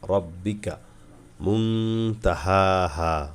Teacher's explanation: নুন সাকিনের পরে তা আসছে গুণনা হবে